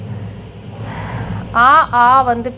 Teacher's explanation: ஆ பிறப்பது வாயை திறந்து ஒலிப்பதனால் அங்காப்பு